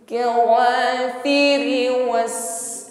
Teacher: huruf sin sukun hamas, nafas berhembus, sofir ada bunyi desis yang mengalir.